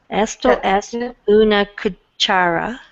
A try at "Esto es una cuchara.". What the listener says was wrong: Exactly.